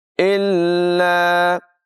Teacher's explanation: سَلَامًا سَلَامًا، إِلَّا، حمزہ کو لام کے ساتھ ملائیں گے اور لام مشدد ہے تو اس کو ذرا رک کر ادائیگی کریں گے